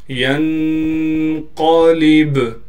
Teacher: با پر ساکن ہونے کی وجہ سے با پر قلقلہ یعنی آواز کو ہلائیں گے · یا کو نون سے ملائیں گے اخفا کے ساتھ. قاف کو موٹا کر کے پڑھنا ہے.